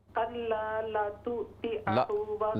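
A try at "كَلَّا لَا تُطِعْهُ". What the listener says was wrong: लाम को लंबा करें कल्ला कल्ला ला तुतिअहु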